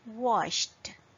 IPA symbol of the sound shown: t